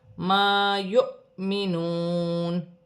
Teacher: واو خالی ہے، جزم کی حرکت حمزہ پر ہے، جھٹکے کے ساتھ پڑھا جائے گا · واو ساکن سے پہلے پیش واو مدہ بن رہی ہے، ایک الف کی مقدار کھینچ کر پڑھا جائے گا۔